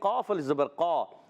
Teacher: قاف کا جو مخرج ہے وہ زبان کی جڑ تالو کا نرم حصہ